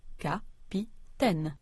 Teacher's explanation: when French speakers say the word capitaine, they stress all three syllables equally